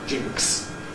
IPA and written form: ʤɪŋks (jinx)